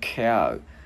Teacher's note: Chữ K bật hơi ra cow